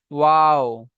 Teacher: ওয়াও, দুটো ঠোঁট মিলবে না ওয়াও উচ্চারণ হবে। হ্যাঁ, দুই ঠোঁট অসম্পূর্ণ মিলিয়ে উচ্চারণ হয় ওয়াও